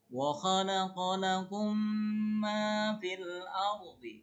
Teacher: Nanti mim sukunnya ini diidghamkan ke mim yang berikutnya ya. · mim yang pertama hilang, dimasukkan kepada mim yang berikutnya, disertai gunah dan ditahan 2 harokat. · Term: idgham mislaini